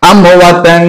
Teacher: নুন সাকিনকে আপনাকে লুকায়া, একদম নাকের সাথে লুকায়া গুন্না করে পড়তে হবে